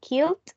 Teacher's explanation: the D agrees in voicing with the L, so killed.